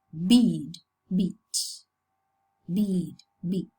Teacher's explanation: when the fleece is followed by a voiced consonant, or when it occurs in an open syllable, the sound preserves its length. But when it's followed by a voiceless consonant, the sound is clipped or shortened. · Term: clipped fleece